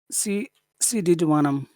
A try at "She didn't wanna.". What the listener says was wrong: Okay, in North America, we don't like to pronounce T's at the end of words, so I'm saying didn't, didn't. So that n is very important because it's the only way that I know that it's negative.